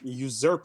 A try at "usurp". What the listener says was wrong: it's pronounced you serp yeah usurp serp yeah serve you said z erp